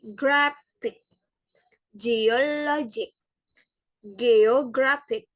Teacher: penekanan pada suku kata kedua terakhir yang berakhiran IC